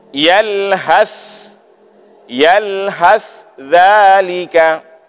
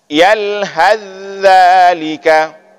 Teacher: izhar itu kita jelaskan huruf sa dan perjelas huruf za sendiri-sendiri. Sedangkan idgham kita masukkan sa ke dalam huruf za.